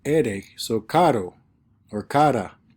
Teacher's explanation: When it's a single R in between two vowels, it just sounds like a D, ere, so caro or cara.